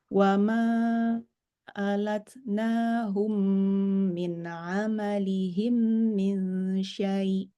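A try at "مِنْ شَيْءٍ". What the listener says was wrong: Panjang. Min syai'. Buat 4 harkat lah. Jangan 2 harkat. Boleh. Bukan nggak boleh ya. Tapi buat yang 4 harkat aja.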